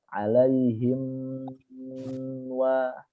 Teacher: Nyambung dia alaihim wa. Jadi antara bunyi him masuk ke wa nyambung nih ya, jangan putus.